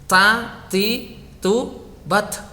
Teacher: Huruf ta itu ndak punya shofir. Huruf ta itu dia punyanya hamas, dan dia itu syiddah. Syiddah itu bunyinya tertahan, dia tidak punya bunyi.